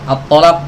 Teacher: lain ya dan menipiskan huruf th pada kata attalaq ya attalaq th ini kan huruf tebal kalau ditipiskan atalaq atalaq maka huruf thnya jadi hilang berubah jadi huruf ta